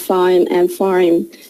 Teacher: there are 2 ways to pronounce it, with the R or without the R.